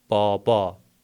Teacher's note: Yəni sözün ortasında və sonunda gələn a səsi uzun tələffüz olunur.